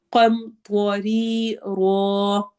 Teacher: میں ہم نون کی آواز کو چھپائیں گے، قم، طوری، رو، قاف ہیوی ہوگا، طوا ہیوی موٹا پڑھا جائے گا ، ری پہ یا مدہ ہو رہی ہے، 2 حرکہ لمبا